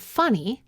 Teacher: In the word funny, the first syllable has this mid-back unrounded vowel that we represent with the wedge symbol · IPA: [ʌ]